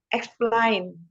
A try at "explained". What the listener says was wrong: Explain. A-nya nggak dibaca jadi E ya. Explained.